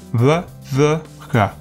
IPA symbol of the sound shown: β ð ɣ